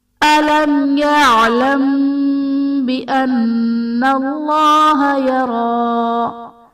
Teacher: میم ساکن کے بعد حرف با اور میم کے علاوہ یا ہے تو یہاں پر اظہار شفوی کا قاعدہ ہوگا، یعنی میم ساکن میں ہم غنہ نہیں کریں گے · یعلم بان میں میم ساکن کے بعد حرف با ہے تو یہاں پر اخفائے شفوی کا قاعدہ ہوگا، یعنی میم ساکن میں ہم غنہ کر کے پڑھیں گے